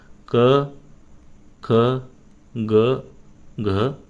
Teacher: हे पहिले दोन जे असतात तर ते कसे असतात कठोर असतात दुसरे दोन जे असतात तर ते मृदू असतात आणि शेवटच अनुनासिक असत